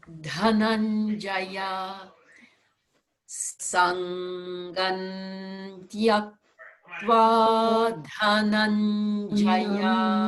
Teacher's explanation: change that M to an N so that the N is already at the teeth